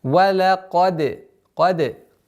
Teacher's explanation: Даль мягкий звук, и поэтому калькаля мягче должно быть.